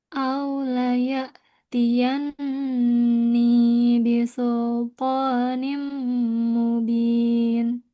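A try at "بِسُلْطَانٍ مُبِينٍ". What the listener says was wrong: Sekarang yang nimnya belum belum sama dengan yan. Samain. Jadi harus sama dengungnya. Ini, dengung, ini ya. Harus sama, harus konsisten.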